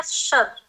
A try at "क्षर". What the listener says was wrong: शर, क्षर, क्षर, ककार का उच्चारण करेंगे, का को नहीं, क्षर नहीं बोलना है, क्षर, क्षर ककार अर्ध ककार तो रहेगा ही, केवल आपका उच्चारण आ रहा है शर, क्षर, क्षर।